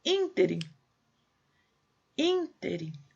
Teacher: Ínterim. Acento no primeiro i. Proparoxítona.